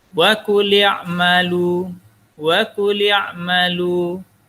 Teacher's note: Yang pertama, mad asli. Karena dhammah bertemu dengan waw sukun, panjangnya 2 harakat.